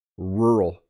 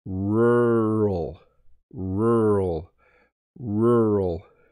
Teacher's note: I almost don't say the two syllables.